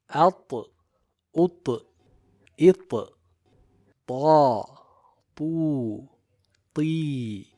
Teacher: Now the letter Ta has jahr and shiddah. Also it is characterized by qalqalah in the sakin state.